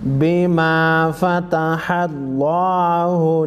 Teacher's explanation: لفظ اللہ سے پہلے زبر ہے لفظ اللہ کو موٹا پڑھیں گے